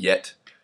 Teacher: the next sound we have is actually palatal it's the Glide